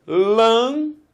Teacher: Repare, são três sílabas, porque foram três impulsos.